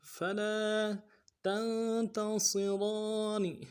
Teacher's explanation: تا کو نون کے ساتھ ملانا ہے، نون ساکن میں غنہ کریں گے، اگر تا کو نون سے ادا کریں گے، صاد کو موٹا کریں گے، را کے اوپر کھڑا زبر ہے، ایک الف مدہ میں کھینچیں گے، اگلے نون کو نون سے ادا کریں گے، وقت کی صورت میں نون کو ساکن کریں گے.